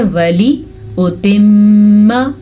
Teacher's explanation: میم کے اوپر شد آ گئی ہے تو غنہ کرنا لازمی ہے